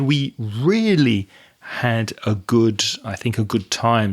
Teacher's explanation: And you also said we really had a good time. So you stressed really.